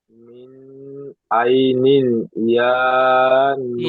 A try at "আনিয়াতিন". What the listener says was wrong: ইয়া বলছেন, এখানে ইয়া নেই, এখানে হামজা খাড়া যাবার আ আছে।